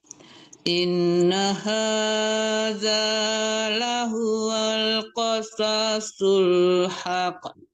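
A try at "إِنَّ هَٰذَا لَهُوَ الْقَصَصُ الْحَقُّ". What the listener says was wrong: Ya ditahan dulu ya karena qafnya bertasdid ya, ditahan dulu. Qasasul haq. Ditahan dulu baru dipantulkan ya, baru dikolok-kolokkan.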